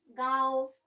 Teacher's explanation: अनुनासिक या चंद्र बिंदु, इनका उच्चारण नाक और मुख से होता है। उच्चारण में लघुता पाई जाती है, जैसे गांव।